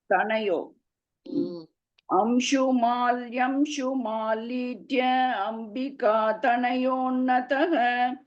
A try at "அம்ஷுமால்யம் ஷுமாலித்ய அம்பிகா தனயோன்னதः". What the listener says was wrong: very good